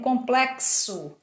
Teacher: no complexo o X tem um som do KS